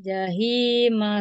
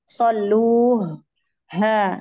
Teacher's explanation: di kata al-jahim ini hanya yang keluar dari tenggorokan tengah. Jadi beda dengan ha yang di akhir.